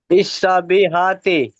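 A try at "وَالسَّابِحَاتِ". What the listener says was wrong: ওয়াসসাবিহাতি, ইসা নাই, ওয়াসসা।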